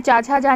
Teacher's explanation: क्योंकि कंठ से चा छा जा नहीं बोला जाता, तालु से बोला जाता है ना